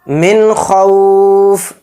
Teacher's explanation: من خوف، اور نون ساکن کے بعد خا آ رہا ہے اور خا اظہار حلقی کے 6 حروف میں سے ایک حرف ہے، تو اس نون کی آواز کو بلا غنہ کے پڑھیں گے، یعنی اس میں اظہار کریں گے. من خوف، ایک دم پڑھیں گے اس کو.